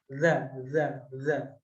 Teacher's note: huruf z keluar dari ujung lidah bertemu ujung gigi seri atas · huruf zal, keluar dari ujung lidah bertemu ujung gigi seri atas. Jadi ketika kita mengucapkan huruf zal, kita letakkan ujung lidah kita di antara ujung gigi seri.